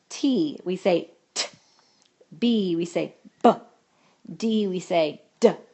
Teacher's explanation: All those sounds stop as soon as your mouth gets done saying it. It doesn't hold it continuously like our continuous sound does. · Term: clipped sounds